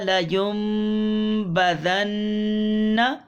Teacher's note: اقلاب، نون ساکن تنوین کے بعد با